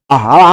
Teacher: শুধু স্বরে আ, অর্থাৎ এই ধ্বনিটা উচ্চারণ করতে একদম ঠোঁট সবচেয়ে বেশি খোলা থাকে। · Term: বিবৃত স্বরধ্বনি